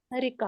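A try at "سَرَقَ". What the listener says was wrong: सरका, सरिका नहीं होता, सरका, बाबना से सरका।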